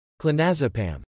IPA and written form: kloʊˈneɪ zəˌpæm (Clonazepam)